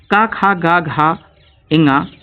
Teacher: तो का वर्ग के जितने भी अक्षर होते हैं वो कंठ ध्वनियाँ कहलाती हैं। इसमें विसर्ग भी आ जाता है, विसर्ग।